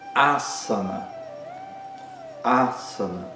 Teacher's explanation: Nessa palavra, o primeiro a é longo, os outros dois são curtos. · Então, não é a sana, né? O primeiro a é forte, é longo, é aberto. Aã. Os outros dois são curtos e fechados.